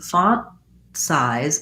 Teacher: i just close to make the t font size and then i release right into the s